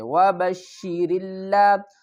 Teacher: واو زبر وا، با شین زبر بش، شین زیر شی، وَبَشِّ را کو لام سے ملائیں گے، اس الف کو نہیں پڑھیں گے